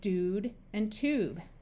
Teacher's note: words without the Y sound where you just have a long u that sounds like ooh